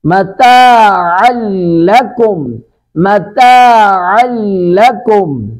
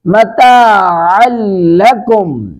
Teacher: ومرعاها والجبال ارساها، اور رو کو پر کر کے پڑھیں، سین پر سیٹی کی آواز آئے گی، ارساها متاعا لکم، متاعا لکم، متاعا نون تنوین کے بعد لام ہے، یہاں پہ ادغام بلا گناہ کریں گے